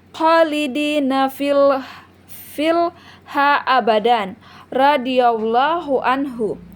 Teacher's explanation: tanwin di sini ia bertemu dengan huruf ro, jadi dimasukkan dengan tanpa dengung · dibaca dengan memasukkan nun mati atau tanwin tanpa dengung, yaitu saat nun mati bertemu dengan huruf lam atau ro. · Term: idgham bila gunnah